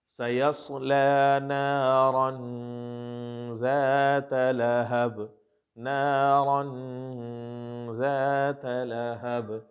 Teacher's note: اخفا کہتے ہیں hiding the voice. اپنے نیزل میں جا کے، اپنے ناک کے اندر جا کر کے تھوڑی دیر کے لیے آواز کو روکتے ہیں، اس کو کہتے ہیں غنہ